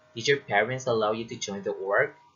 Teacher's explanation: your intonation should rise at the end of the utterance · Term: rising intonation